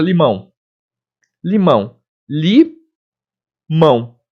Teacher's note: O A é vogal e o O é semivogal, que tem aquele sonzinho de U